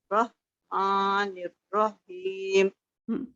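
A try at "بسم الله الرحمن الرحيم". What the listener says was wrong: देखिए मतलब रॉ को आपका बहुत छोटा है, जब आप जोड़ रही होती हैं उसको लंबा करें थोड़ा सा, रॉ। बिस्मिल्लाहि हिर हिर। ठीक है, ये हा आपने दोनों हाथ ठीक करने हैं, ठीक है अल्हम्दुलिल्लाह।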